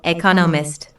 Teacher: there are four syllables in Economist with the stress on the second syllable